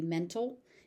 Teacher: So you may also hear mental, where the T is dropped completely. The T is very light. Sometimes it's so light that it stops existing. So it could be mental, it could be mental, depending on the speaker.